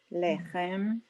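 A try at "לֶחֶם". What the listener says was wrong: Look again, look at the vowel. Under the ha, it's ah.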